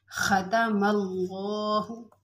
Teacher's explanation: ख़तमल्लाहु, अब अल्लाहु में लफ्ज़ अल्लाह को हमने मोटा पोर पढ़ा है क्योंकि लफ्ज़ अल्लाह के लाम से पहले ज़बर आ रही है, तो जहाँ पर भी ज़बर और पेश आएगी वहाँ पर लफ्ज़ अल्लाह को हम पोर पढ़ेंगे, मोटा पढ़ेंगे। · ख़तमल्लाहु में खा जो है मोटा पड़ा जाता है, हा बारीक होता है और खा मोटा पड़ा जाता है।